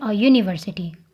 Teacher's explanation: that first sound is a Y sound, which is a consonant sound. So we say a university.